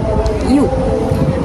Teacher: bunyi u di hujung perkataan telur menunjukkan vokal belakang bulat